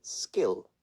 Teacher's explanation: the word skill where the same k is not aspirated